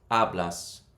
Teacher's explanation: It ends with a consonant, the emphasis goes on the second last syllable.